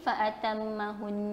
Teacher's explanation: nun dan mim yang bersabdu, wajib gunnah padanya, wajib gunnah dengung padanya 2 harakat, sama ada di tengah ataupun di hujung.